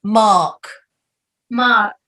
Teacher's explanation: you don't have to pronounce the r at all unless it's a linking r